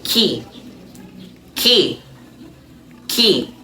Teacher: the first one is fronted before front vowel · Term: fronted allophones